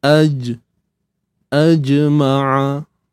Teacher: lidah dengan langit tadi kan dia macam ni a AJ so bila kita lepaskan tekanan tu berlakulah lantunan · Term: Qalqalah